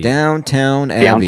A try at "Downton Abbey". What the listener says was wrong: Downton. So there's no W. It's just down and then T-O-N. Downton Abbey.